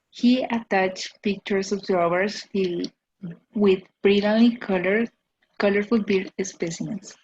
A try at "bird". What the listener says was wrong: Bird, not beard. Beard is this. This is a beard. Bird, bird. The schwa sound, with the R, bird.